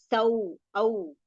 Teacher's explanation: Au sound. Prolong it a little and should not be saw.